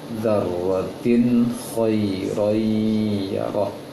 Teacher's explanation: Dan di sini ada tanwin bertemu dengan kha, maka tidak didengungkan, dijelaskan bunyi tanwinnya.